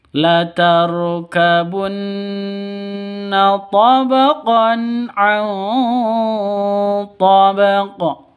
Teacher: bacanya harus dipantulkan ke huruf qafnya karena qalqalah. Di akhir kalimat qalqalah kubra.